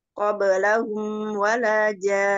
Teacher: ada mim sukun menghadapi wawu bacaan izhar safawi dibaca jelas dengan mentawatsutkan huruf mim